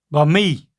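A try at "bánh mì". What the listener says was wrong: But you're leaving the N out, but you're very close.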